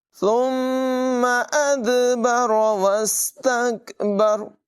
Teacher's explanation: یہاں دال میں قلقلہ ہوگا، خوب زور لگا کر اس کو واضح کر کے پڑھیں گے